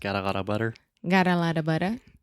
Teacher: That is the flap T. That is much more similar to a Portuguese R, right?